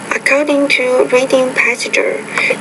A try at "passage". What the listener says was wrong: And say not passage, but just say passage. 2 syllables, not 3.